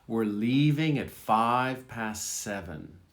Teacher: the V in 5 is barely voiced. It's very soft.